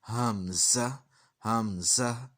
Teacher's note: और ज़ा सीटी वाला, ये सीटी की आवाज़ भी आ जाएगी, और फिर आखिर में हा है।